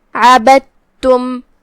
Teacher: دال کو تا میں داخل کر کے صرف تا پڑھیں گے لیکن تشدید کے ساتھ. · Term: ادغام متجانسین